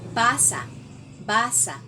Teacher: Ang basa ay mayroong diin sa unang pantig, which is ba.